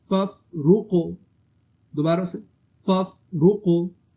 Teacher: یہاں فا پر قلقلہ نہیں ہوگا، یہ سمپل ساکن لڑکا ہے، یہاں آواز آپ موو نہیں کریں آخر میں.